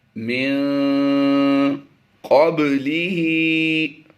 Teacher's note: با پر ہم نے قلقلہ کر کے پڑھنا ہے، ہا کھڑی زیر ہی کو لمبا کر رہے ہیں۔